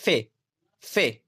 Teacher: इसमें निचले होठों से ऊपर के दांतों पर हवा को रोका जाता है निचला होठ आपका है ऊपर के दांत आप रोकेंगे जैसे हम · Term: लब दंती